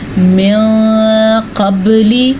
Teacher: نون ساکن کے بعد قاف آیا ہے حروف قلقلہ میں سے، حروف اخفا میں سے، تو نون ساکن کو ہم چھپا کے پڑھیں گے